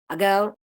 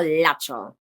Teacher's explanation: the back of the tongue is raised towards the velum during the articulation of the consonant. So with the tip-tongue contact touching the alveolar ridge, but with the tongue being raised towards the velum also. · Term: dark L